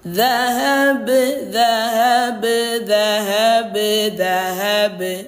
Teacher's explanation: Nah, huruf ba ini kebetulan sifatnya tipis, maka pantulannya ringan dan tipis. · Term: qalqalah sugro